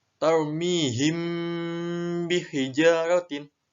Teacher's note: Karena mim sukun bertemu dengan ba itu dibaca dengung ya. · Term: ikhfa syafawi